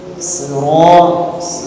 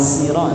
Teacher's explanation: Dia tetap tebal, walaupun dia kasrah, dia tetap tebal, tapi berkurang ketebalannya. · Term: Menjaga ketebalan